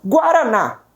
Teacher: a minha última sílaba termina em A. Ela é proferida com mais força. Se a última sílaba termina em A, lá que vai o acento. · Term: oxítonas